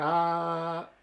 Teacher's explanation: una es la posición de la lengua por ejemplo la es un sonido en donde la lengua está absolutamente plana abajo de la cavidad bucal